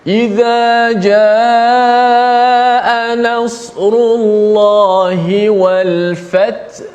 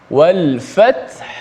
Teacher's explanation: Ramai yang baca wal fath menggugurkan huruf ha, sedangkan ha kena bunyikan. Ha sifat dia lemah sikit, dia taklah bunyi sekuat ta, kerana ha ni huruf dia berada di hujung, berada di tengah halqum, jauh daripada mulut. Ha bunyikan angin ha itu, suara ha itu.